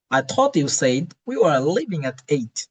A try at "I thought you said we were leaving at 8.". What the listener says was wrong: Mashallah, mashallah. Good. Better than the first one.